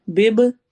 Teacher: با پر کلکلا ہو رہا ہے، ایکو ساؤنڈ ہوگی